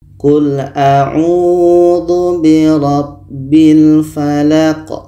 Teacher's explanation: La ini pendek dan qa ini dimatikan. Qa mati hukumnya adalah qalqalah. Qalqalah kubro, ada pantulan.